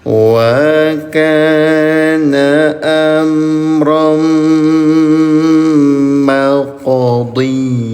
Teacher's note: Qaf dalam keadaan sukun namanya qalqalah, pantulkan cara bacanya. · Bunyi tanwinnya masukkan ke huruf mim disertai dengung selama 2 harokat. Terjadi hukum tajwid namanya idgham bi gunah.